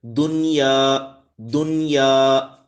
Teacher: یہاں پہ اظہار مطلق کر کے پڑھنا ہے، یہاں غنہ نہیں ہوگا